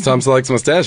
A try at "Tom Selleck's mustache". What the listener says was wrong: The emphasis was in a really weird